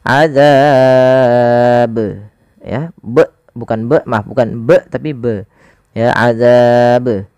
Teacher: ba itu harus memiliki pantulan karena ba punya sifat yaitu qalqalah. Qalqalah artinya memantul.